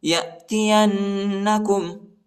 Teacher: یا کو نون کے ساتھ ملانا ہے اور غنہ بھی کرنا ہے